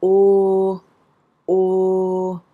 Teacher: it doesn't have that lovely wavy thing going on that in English oh has